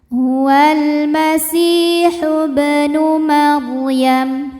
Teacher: Ro sukun didahului baris fathah dibaca secara tafkhim. Bacanya tebal.